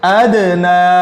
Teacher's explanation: دال ساکن ہے، اوپر جزم آ گئی تو دال کو ہم ہلا رہے ہیں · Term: حروف قلقلہ